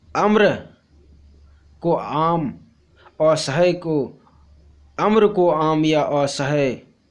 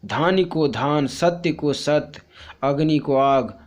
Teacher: अंत व्यंजन लोप, इसमें शब्द के अंतिम व्यंजन का लोप हो जाता है